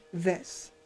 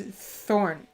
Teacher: so the th in this for me at least it vibrates more whereas the th in the thorn is more breathy